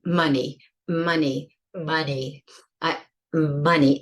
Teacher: some of those sounds are coming through my nose